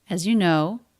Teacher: The word as, this vowel can reduce to the schwa, but I do think I hear it as a pure a. The letter S is pronounced as a Z in this word.